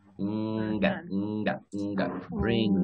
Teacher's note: Este sonido que está aquí se parece al de la N... pero una N que se pronuncia atrás en la glotis